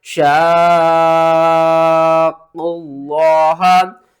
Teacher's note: इसको आपने 5 या 6 अलिफ के बराबर खींच कर पढ़ना है। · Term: लाजिम कलमी मुसक्कल